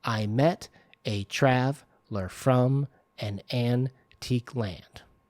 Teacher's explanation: where's the stress on traveler on trav it's on trav